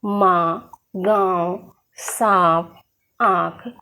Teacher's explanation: अनुनासिक यानी जिन वर्णों का प्रयोग किसी भी वर्ण के ऊपर चंद्र बिंदु के रूप में लगाया जाता है और इसका उच्चारण करते समय हवा नाक और मुंह दोनों से बाहर निकलती है, उसे हम अनुनासिक कहते हैं।